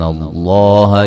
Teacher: لفظ اللہ کو موٹا ادا کریں گے، اس سے پہلے حرف پر زبر ہے